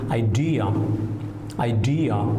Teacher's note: we put the stress on the second syllable